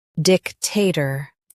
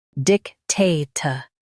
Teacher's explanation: In US, stress dic. In UK, stress ta.